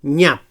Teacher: So palatal nasal sonor